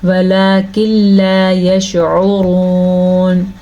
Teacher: یشعرون، عین کے تلفظ کا دھیان رکھنا ہے، را کو پر پڑھنا ہے کیونکہ را کے اوپر پیش ہے. واو مدہ کو ادا کرنا ہے اور وقف کی وجہ سے ہم نون کو ساکن کر دیں گے.